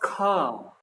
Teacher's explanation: खा में थोड़ा ज्यादा टाइम लगता है, तो खा कहाँ चला जाएगा, महाप्राण में